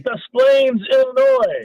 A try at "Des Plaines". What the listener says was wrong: I think the S is silent. you want to try that again? It's the S. You said Des Plaines.